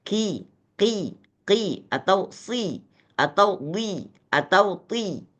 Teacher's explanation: tafkhimnya itu adalah tafkhim yang paling rendah levelnya